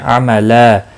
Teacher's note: احسن، ہا وسط حلق والا ہے، اس کی ادائیگی کا خاص خیال رکھیں گے، باقی کسی بھی حرکت والے حرف کو کھینچنا نہیں۔ عملا، وقف کی صورت میں 2 زبر کو بدل کر ایک زبر کے ساتھ پڑھیں گے، الف مدہ بنے گا، ایک الف کے برابر کھینچ کر پڑھیں گے۔ اور ملانے کی صورت میں ادغام باگنہ ہوگا کیونکہ تنوین کے بعد حروف یرملون کا واو آیا ہے۔